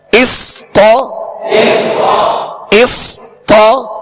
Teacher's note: طا کی زبر دراز نہ ہو، بغیر کھینچے بغیر جھٹکا دیے آواز اور منہ کھول کر پڑھیں گے